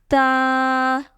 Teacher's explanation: Ta comes out when the tip of the tongue touches the front of the 2 teeth